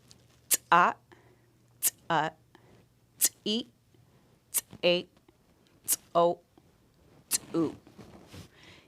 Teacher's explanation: Now we are going to force that TS sound with a glottalized C.